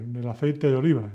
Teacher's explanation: El aceite de oliva is all one word, really, when you pronounce it. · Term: linking